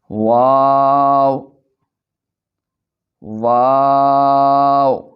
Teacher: واو دونوں ہونٹوں کی گلائی سے ادا ہوتا ہے۔